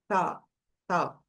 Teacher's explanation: quando você ultrapassa um pouquinho a língua, não precisa muito, ultrapassa um pouquinho, chegou entre os dentes, você solta um arzinho sem voz